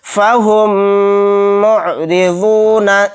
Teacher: میم ساکن کے بعد میم آ گیا تو میم کو میم سے ملا کر غنہ کے ساتھ پڑھیں گے، فہم معرضون، اس طرح سے یہاں پر غنہ کرنا ہے۔